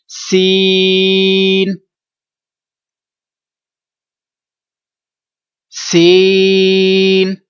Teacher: اس کو ہم نے 3 الف تک 3 سیکنڈ تک اس کو لمبا کرنا ہے اور ناک میں آواز نہیں جانے دیں گے